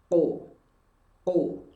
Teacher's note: Karena qaf memiliki sifat qalqalah, berarti ada bunyi pantulan.